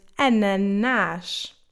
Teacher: The N can also sound nasalized when between a vowel and a consonant, or sometimes even between 2 vowels